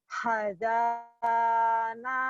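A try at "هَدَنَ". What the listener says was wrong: Hanya nggak boleh ada desah gede ya. Hadana.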